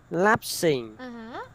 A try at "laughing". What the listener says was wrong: Laughing. Laughing. It's an F. Laughing.